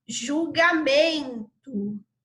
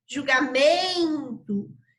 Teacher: Julgamento. Então, a sílaba de maior intensidade, a sílaba tônica da palavra julgamento, é o me